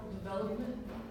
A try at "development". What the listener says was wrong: Close. You're not putting the stress on the right syllable.